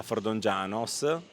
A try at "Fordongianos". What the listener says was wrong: scrive O, ma si legge U. Come Codrongianos, si dice Codrongianus, ma si scrive Codrongianos.